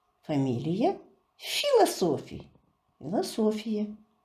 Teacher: Философии. Немножко по-чеченски произносим, делаем ударение на первый слог и произносим по-чеченски фамилии.